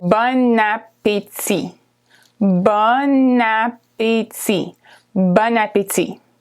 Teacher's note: Separately, the words are actually bon, which is good, and appétit, which is appetite. But when you put them together, there's a liaison between the last consonant and the first vowel.